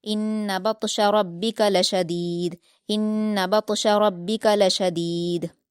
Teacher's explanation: शदीद में दाल पर कलकला करेंगे